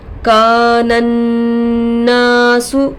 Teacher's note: نون پر تشدید آ کر ہے گنہ ہوگا، ناک میں آواز کو روکنا گنہ کہلاتا ہے، گنہ کا مقدار 1 الف کا برابر ہے